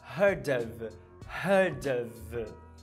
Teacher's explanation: Não esquece que apesar de você escrever OF, você fala of com V. E ele junta, né?